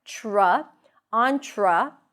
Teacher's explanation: Tra, there is a schwa here. Tra, T-R, it actually sounds like a ch sound when you pronounce them together.